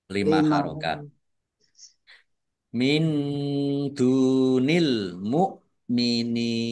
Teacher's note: nun sukun bertemu dengan huruf Dal bacaan Ikhfa dibaca samar-samar